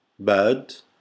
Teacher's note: British English, we don't pronounce a lot the R, not like the Americans, we have the isoflex R, but the British don't pronounce it, they just don't pronounce it.